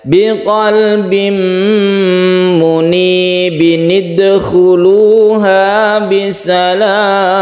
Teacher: Jadi kasroh biasa, kemudian pendek, kemudian diteruskan dengan nun kecil yang dikasrohkan. Jadi nun ini bukan huruf termasuk huruf Al-Quran, tapi ini adalah cara membaca apabila ada tanwin bertemu dengan hamzah wasol, karena di sini adalah hamzah wasol. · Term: nun iwad